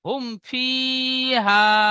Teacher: মিম সাকিনের পরে বা মিম ছাড়া অন্য অক্ষর ফা এসেছে তাই মিম কে বিনা গুন্নায় জাহির করে তাড়াতাড়ি পড়তে হবে। একে ইজহারে স্বাভাবি বলে।